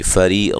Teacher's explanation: را کو باریک پڑھنا ہے، یا مدہ ہے، قاف کو موٹا ادا کرنا ہے.